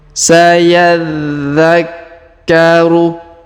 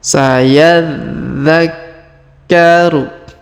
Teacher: Perhatikan huruf dha berharokat tasdid, maka kita tahan dan tekan pada huruf dha-nya ya.